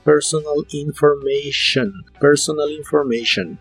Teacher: la t de information se pronuncia como si fuera una sh